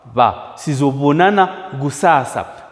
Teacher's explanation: it's usually very difficult for people to articulate that smooth fricative sound, bilabial sound.